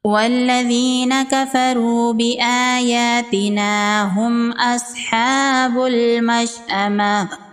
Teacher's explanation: میم ساکن کے بعد حمزہ ہے، یہاں پر اظہار شفوی کا قاعدہ ہوگا، میم کو ظاہر کر کے پڑھیں گے، میم پر غنہ نہیں کریں گے۔ صاد حروف مستعلیہ میں سے ہے، صاد کو پر پڑھیں گے، کھڑی زبر ہے، 1 الف کے برابر کھینچ کے پڑھیں گے۔